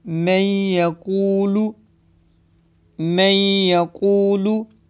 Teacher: इदगाम होगा, यानी गुन्ना करेंगे जिसकी मिकदार 1 अलिफ के बराबर, 2 हरकत के बराबर है। 2 या 3 सेकंड के लिए खींच कर पढ़ेंगे।